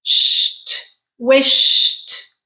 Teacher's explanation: sh is our unvoiced consonant at the end